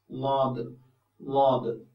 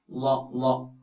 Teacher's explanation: ഷ ഷ സ ഷ സ് സ്വാദ് സ്വാദ് ളാദ് ളാദ് ഇത് ശരിക്കും നാവിന്റെ ഒരു വശം അണപ്പല്ലുകളോട് ചേർന്ന് ചേർത്ത് വെച്ചുകൊണ്ട് ഉച്ചരിക്കണം എന്നാണ് ള ള കടിച്ചു പിടിച്ചാലും കുഴപ്പമില്ല ള എന്ന് പറയുമ്പോൾ നാവിന്റെ ഒരു